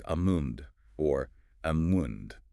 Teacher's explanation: While the L is often pronounced in American English in the classic RP or received pronunciation standard, the L is silent or at least barely perceptible.